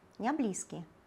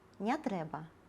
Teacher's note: Гэта насамрэч адбываецца не толькі ўнутры слова, але і з прыназоўнікамі без і не. Калі націск падае на першы склад слова, а перад гэтым словам стаяць без ці не, яны ператвараюцца ў бяз і ня.